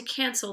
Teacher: the emphasis there is on the can it's on the first syllable